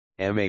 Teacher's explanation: 1 first tone, a high, level, and steady pitch. Imagine singing a high note, ma with macron, mother.